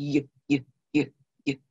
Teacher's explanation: the y sound, like in yellow, where you're pushing that sound up through the roof of your mouth, sort of, and out through y.